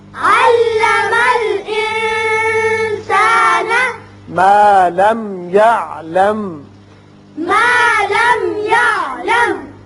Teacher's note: یہاں دونوں جگہ میم ساکن ہے، اظہار ہوگا میم پر. یہاں وصل کی صورت میں بھی یعلم ہی پڑھا جائے گا، لیکن وقف کرنا بہتر ہے، وقف مطلق ہے.